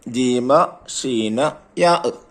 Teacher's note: ഈ 3 അക്ഷരങ്ങൾ നാവിന്റെ മധ്യവും അണ്ണാക്കും ഉപയോഗപ്പെടുത്തിയാണ് ഉച്ചരിക്കേണ്ടത്